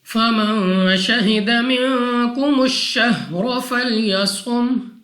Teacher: نون ساکن کے بعد شین حروف اخفا میں سے ہے، غنہ کر کے پڑھیں گے۔